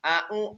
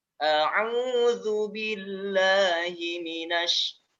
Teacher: Ain sama dengan ha dari tengah tenggorokan.